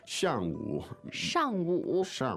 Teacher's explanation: the tones there uh fourth and third fourth and a third